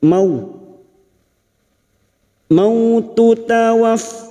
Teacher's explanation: Fathah bertemu waw sukun kita lunakkan seperti bertemu dengan huruf abjad u